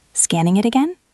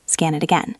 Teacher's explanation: Your voice went up at the end. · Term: rising tone